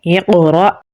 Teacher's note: حمزہ پہ جزم ہے تو یہاں پر ہم جھٹکا لگا کر پڑھیں گے اقرأ۔ را کو پر یعنی موٹا پڑھیں گے اور با کے ساتھ ملائیں گے کیونکہ با کے اوپر تشدید ہے۔